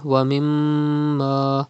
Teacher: And then وَمِمَّا, you can see mim mushaddad in this word, you have to read mim mushaddad with gunna